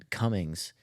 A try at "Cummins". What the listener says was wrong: Cummins, There's no G there, brother.